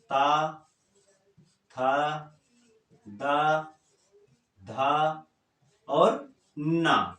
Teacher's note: त थ द ध जो भी है पूरा दांत से बोला जाता है